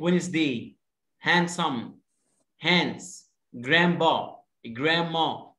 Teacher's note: when the letter d comes after the letter n we don't pronounce the letter d